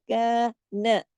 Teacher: नून एक हरकत पढ़ा जाएगा जबकि काफ दो हरकत।